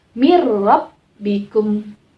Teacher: idgham bilagunnah itu dimasukkan dan tanpa dengung